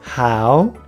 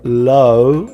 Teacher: How is an ow sound, but low is an O sound, even though OW, same letters